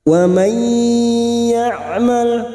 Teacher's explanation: yamal Min W ya'mal malah tidak boleh seperti dipantulkan namanya tawalud lam sukun hanya masuk tidak boleh dipantulkan